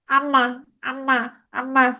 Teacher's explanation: এখন আমি নাকটা বন্ধ করবো, দেখো, আম্মা, আম্মা, আম্মা। মানে আমি যখন আম্মা বলতেছি, তখন কিছু বাতাস নাক দিয়েও বের হয়। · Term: নাসিক্য